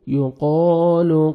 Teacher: قاف کو موٹا کر کے پڑھیں گے، اور الف مدہ 1 سیکنڈ قاف کو آپ نے کھینچنا بھی ہے